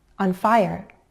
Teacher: On fi, the I as in by, diphthong. On fi, and finally the schwa and r sound, on fire.